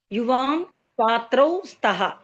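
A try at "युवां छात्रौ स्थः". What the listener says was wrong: అంటే కొంచెం గట్టిగా పలకండి. మీరు స్తః అంటే ప్రథమ పురుషంలో స్తః ఉంటుంది, ఇక్కడ స్థః ఉంటుంది. కొంచెం ఆ థాని ఒత్తి పలకాలి, వినపడాలి అది. యువాం స్థః. స్థః ఆ రెండో థ రావాలి ఇక్కడ.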